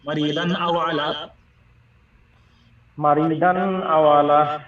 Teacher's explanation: দান, এটা নুন একদম পরিষ্কার উচ্চারণ হবে। মারিদান আও আলা, দান বলে টান দেওয়াই যাবে না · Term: ইজহার